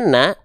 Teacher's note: dalam huruf yang tebal ya Nun dibacanya Na atau dibaca no tentu huruf nun ini enggak dibaca dengan vokal o tapi dia dibaca dengan vokal a